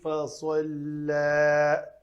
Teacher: صاد کو پر کرنے کے ساتھ فوراً لام پتلا پڑھنا ہے۔